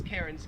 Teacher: The Australian accent just leaves the R off if it's ever in the last syllable of a word.